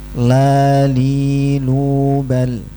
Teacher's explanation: Nempelnya ke gusi dari gigi-gigi depan. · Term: Huruf lam